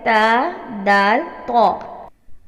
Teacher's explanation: زبان کی نوک جب سامنے کے 2 دانتوں کی جڑ سے لگے تو حرف ادا ہوتا ہے